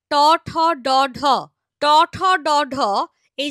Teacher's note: এদের উচ্চারণ স্থান হচ্ছে মূর্ধা ওই যে বললাম দাঁতের ঠিক পেছন দিকে যে শক্ত উঁচু মতো জায়গাটায় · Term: মূর্ধন্য ব্যঞ্জন